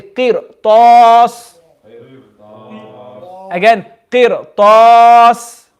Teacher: because of the harful isti'la, after the ra sakin, the ra is now full mouth.